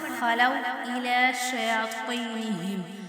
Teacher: اب خواہ کو ہم موٹا پڑھیں گے کیونکہ یہ حرف مستعلیہ میں سے ہے. شیاطینہم، ہاں کو موٹا پڑھیں گے.